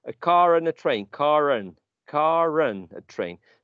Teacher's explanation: And if you say car, I'm going by car, you're not using the final therefore that would be a non-rhotic variety. Now, some non-rhotic varieties use the final R anyway when they are linking two vowel sounds